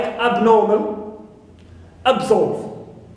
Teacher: I have also the prefix ab, like abnormal, absolve. So here, ab is neutral, no stress on it.